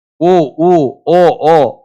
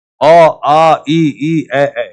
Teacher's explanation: अवत स्वर जहां होठ को गोल बनाने की जरूरत नहीं पड़ती।